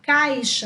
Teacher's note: repare que o som do A é bem mais forte do que o I. Então, o A é chamado de vogal e o I de semivogal, porque o som é um pouco mais fraco.